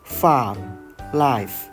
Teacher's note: F is a voiceless labiodental fricative. The inner of the lower lip touches the upper teeth, creating pressure. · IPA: /f/